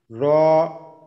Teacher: 10 নম্বর জিহ্বার আগার পিঠ তার বরাবর উপরের তালুর সঙ্গে লাগাইয়া র